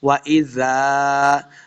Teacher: ذال کے آگے الف ہے، اس کو 2 حرکات لمع کیا